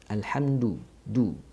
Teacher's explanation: Dhammah, maka bacaan dhammah itu yang sempurna adalah bibir dimonyongkan